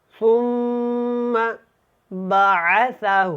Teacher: جی کیسے اس کو ہم نے پڑھا، می آتا، می آتا عامل ثم بعثہ، ثم، سا کو نرمی کے ساتھ ادا کریں، اور میم کو جب ادا کرنا ہے تو یہاں پہ غنہ کرنا ہے کیونکہ یہاں پہ میم کے اوپر شد ہے۔